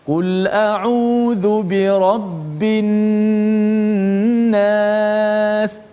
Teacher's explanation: Contohnya qul a'udzu birabbin nas, sama je baca dengan hukum lam syamsiah yang lain yang tak dengung, cuma pada nun itu dipanjangkan suara gunnah itu saja kerana bertemu dengan huruf nun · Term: Idgham syamsi bi gunnah